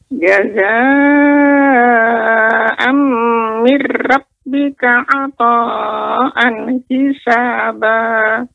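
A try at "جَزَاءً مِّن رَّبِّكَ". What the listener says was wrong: Ro ya, terus nanti dilatih Nek ya. Ro di sini tidak banyak getaran. Ro demikian. Mirra. Jazaa'an mir rabb.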